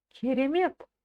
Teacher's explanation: Ударение на слог мет. На последний слог.